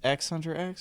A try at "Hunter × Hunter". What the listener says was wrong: I think it's Hunter Hunter. The X is silent. Hunter.